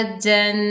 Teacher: जिम के ऊपर दो ज़बर की तनवीन, तनवीन में गुन्ना होगा जन। अफ़वा जन।